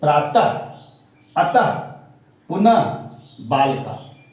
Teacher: जिस वर्ण के अंत में विसर्ग का चिन्ह लगा दिया जाए तो उसका उच्चारण एक झटके के साथ करना पड़ता है, या वह ह का उच्चारण के समान होता है। · विसर्ग इसका उच्चारण ह के समान होता है। विसर्ग स्वरों के बाद आता है, इसका उच्चारण एक झटके से होता है। उदाहरण स्वरूप जैसे प्रातः, त में हलंत है, तो आप उच्चारण करके देखें तो प्रातः, तो ह आपका अंत में ह का उच्चारण अतः ह आ जाता है, पुनः ह का उच्चारण जैसा समान होता है।